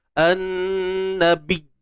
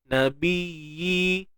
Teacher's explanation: Pada ya ni ada satu sifat yang disebut rakhawah, iaitu suara yang mengalir.